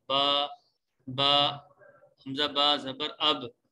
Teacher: اور پھر اس کے ساتھ ساتھ با کا اگر ہم دیکھیں تو با کا مخرج یہ ہے، ادائیگی کی جگہ یہ ہے کہ دونوں ہونٹوں کے جو تری والا حصہ ہے اس سے با ادا ہوتا ہے